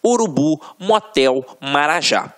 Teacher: a última sílaba é a tônica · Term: oxítonas